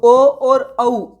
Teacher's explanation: ओ plus औ इसका उच्चारण स्थान क्या आ जाएगा, कंठ आ जाएगा, कंठ भी और ओष्ठ भी, तो कंठ प्लस ओष्ठ आ जाता है ओ दौता का, ओ और औ का उच्चारण स्थान। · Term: कंठोष्ठ